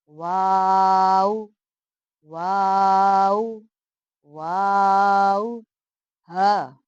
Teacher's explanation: واو دونوں ہونٹوں کی گولائی سے ادا ہوتا ہے